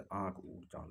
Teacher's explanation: अनुनासिक के उच्चारण में मुंह से अधिक और नाक से कम ध्वनि। अनुनासिक में मुंह से अधिक और नाक से कम, बहुत कम हवा निकलती है, जैसे आँख ऊँख चाँद हो जाएगा।